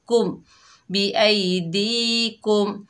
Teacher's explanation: मीम साकिन के बाद बा और मीम के अलावा 26 हरूफों में से हमज़ा आ रहा है, तो यहाँ मीम का इजहार होगा